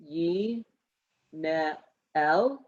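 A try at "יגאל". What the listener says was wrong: This is a gimel. Yig al,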